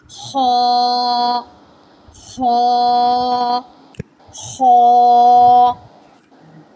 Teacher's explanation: Ha is heavy letter. Originate from the upper portion of the throat.